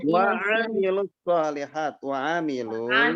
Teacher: Artinya panjang. Wa amilu seharusnya panjang karena ada matobi'i. Cuma sesudahnya ada alif lam syamsiyah sehingga matobi'inya dihilangkan. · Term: membuang bacaan panjang